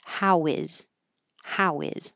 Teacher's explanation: your lips are rounded. And when they move back, they make an invisible W. · Then you can connect the previous vowel to the H by getting rid of the H.